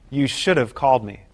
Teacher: We drop the sound H and Link have to the word before it the vowel is reduced to the short weak sound uh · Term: reduction of have